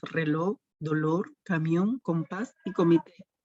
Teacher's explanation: son palabras que tienen la mayor fuerza de voz en la última sílaba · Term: palabras agudas